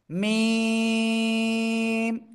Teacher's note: এই দুই ঠোঁটের বাইরের অংশে এরকম লাগিয়ে রেখে আমরা উচ্চারণ করব · দুই ঠোঁটের শুকনো জায়গা থেকে এই মিম অক্ষরটি উচ্চারিত হবে